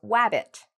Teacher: When I was a child, I could not say this sound. So when I wanted to say words like rabbit, I used to say it like a W, like wabbit.